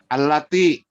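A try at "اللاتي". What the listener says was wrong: Yang kurang panjang. Yang panjang la-nya.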